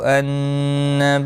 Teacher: نون مشدد پر غنہ ہوگا